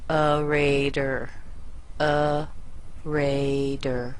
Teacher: and that t o r right here is also very weak the T sounds soft it almost sounds like a d